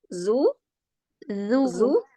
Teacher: Mahrotnya di ujung lidah bertemu ujung gigi.